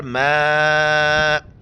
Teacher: मद है, 4 अलिफ की मिकदार खींचना है